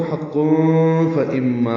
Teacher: اور اگر ملانا ہو تو حق فاما ہوگا، تنوین کے بعد فا آنے کی وجہ سے اخفا ہوگا، اخفاء حقیقی ہے